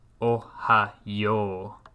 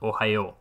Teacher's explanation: the vowel u at the end is a mora of its own. We have a long vowel at the end.